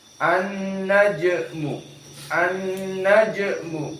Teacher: Dan penekanan di sini an-naj. Maka jim disukunkan, maka hukumnya di sini dalam keadaan qalqalah